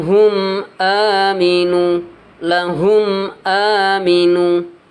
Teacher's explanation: jelas terang jadi tidak ada dengungnya tidak ada samarnya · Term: syafawi